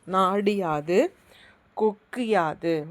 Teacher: இது எல்லாமே குற்றிய லிகர சொற்கள். குற்றிய லுகரத்தில் உள்ள உகரம் இகரமாக மாறும். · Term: குற்றிய லிகரம்